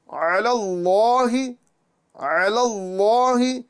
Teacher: यहां पर इस्म जलालत अल्लाह अजजल के लाम को हमें पुर करना है